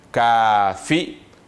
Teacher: le ka est tiré par un alif flottant. C'est comme un alif normal, un alif traditionnel.